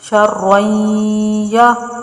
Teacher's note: غنہ کرنا ہے را کو یا میں داخل کرتے ہوئے